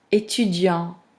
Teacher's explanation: Most words ending in consonant, the consonant, the last one, of course, the last ending consonant, we don't pronounce it, right? When I say étudiant, although the word ends in T, now you don't hear that.